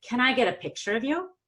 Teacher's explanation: the picture is the last content word and we haven't talked about it yet so it's new so picture gets the PPS it's a yes/no question so I go down on pick and